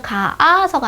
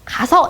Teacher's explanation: 으가 탈락해서 그 다음에 동음 탈락. 동음 탈락은 두 개의 모음이 붙어서 그 중에 하나가 탈락하는 거예요. 가 플러스 아서 이러면 가아서가 아니라 가서 이렇게 되는 게 바로 음이 같아서 탈락되는 모음 탈락 중에 동음 탈락이다 라고 보실 수가 있습니다.